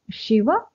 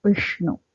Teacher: ಸ್ವಲ್ಪ ನಾಲಿಗೆ ಹಲ್ಲಿನ ಹಿಂಭಾಗಕ್ಕೆ ಟಚ್ ಆಗುತ್ತೆ ಆದರೆ ವಿಷ್ಣು ಇರೋ ಶಳ್ ಆ ನಿಮ್ಮ ನಾಲಿಗೆಯ ತುದಿ ಮೇಲಿನ ಬಾಯಿನ ಮೇಲ್ಭಾಗ ಅದಕ್ಕೆ ಹಾರ್ಡ್ ಪ್ಯಾಲೆಟ್ ಅಂತ ಹೇಳ್ತಿವಲ್ಲ ಆ ಮಧ್ಯಭಾಗದಲ್ಲಿ ಟಚ್ ಆಗುತ್ತೆ ಬೇಕು ಅವಾಗ ನಿಮಗೆ ಆ ಸರಿಯಾದ ಸೌಂಡ್ ಬರುತ್ತೆ ಶಿವ ವಿಷ್ಣು ಓಕೆ ಅದನ್ನ